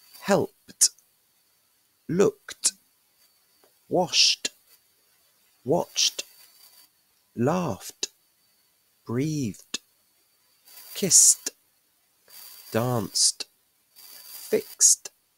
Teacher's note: these are what we call voiceless consonants, so we pronounce them T